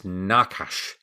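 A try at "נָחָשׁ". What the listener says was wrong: It's more in the back of the throat towards the end.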